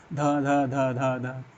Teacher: ज्ञातव्य है कि ध वर्ण का उच्चारण का स्थान ओष्ठ न होकर दंत है